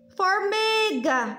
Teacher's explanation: o mi é mais forte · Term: paroxítona